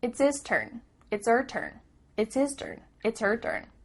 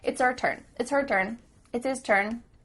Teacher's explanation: the H at the beginning of his and her is cut off we don't do this all the time but it does happen